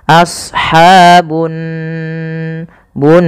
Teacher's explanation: ada gunah pada lafal Nun cara membacanya yaitu ditahan suara nunnya